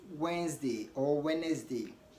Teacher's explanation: D is not pronounced when it comes before n and G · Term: Silent d